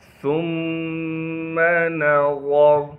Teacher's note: ثم نظر، سا کو باریک کر کے پڑھیں گے اور سا کو آگے میم سے ملانا ہے، میم پر غنہ کیا جائے گا۔ نون کو بغیر کھینچے پڑھیں گے، را کو موٹا کر کے پڑھیں گے